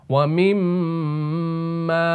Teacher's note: मीम का मखर दोनों होटों के खुश्क हिस्से को अब बाहर वाले जो खुश्क हिस्से हैं ना इनको मिलाए